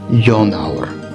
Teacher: the endings dropped off because the accent shifted toward the beginning of the word young hour and over time you see that awr ending that